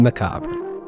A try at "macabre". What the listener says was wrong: Did you just throw like a weird R onto the silent R? Macabre?